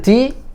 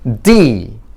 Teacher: 혀의 위치가 다릅니다. D 할 때 우리는 대부분 이빨에 닿지만 영어의 D는 치경으로 갑니다. 치경. 치경이라는 의미는 이빨과 잇몸의 경계, 이 부분을 치경이라고 합니다.